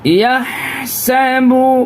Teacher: ہا نکالیں گے یہاں پہ، ہا ایک دم حلق سے